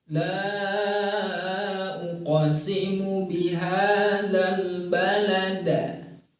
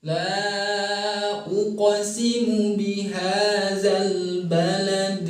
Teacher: Ini sama halnya seperti huruf ba, dalam arti dalam mengucapkan huruf jim dan dal harus diawali dengan meringis atau istifal atau tipis. Sehingga ketika bertemu dengan dal sukun, maka pembacaannya ke vokal E bukan ke vokal A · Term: qalqalah